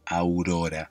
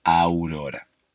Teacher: a u vocal abierta vocal cerrada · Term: diptongo